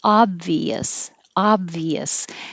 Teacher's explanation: it looks like an o but it sounds like ah obvious so it's stress on the first syllable